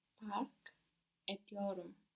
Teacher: the T here of etmek is going to be softened by the vowel that comes after